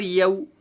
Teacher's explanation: یا واو ساکن سے پہلے یا کے اوپر زبر ہے، واو لین ہوگا، نرم آواز کے ساتھ جلدی ادا کریں گے